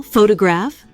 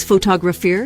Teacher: photograph stress on the first syllable versus photographer stress on the second syllable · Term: word stress